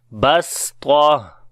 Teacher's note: like the seen with light sound, and ta with heavy sound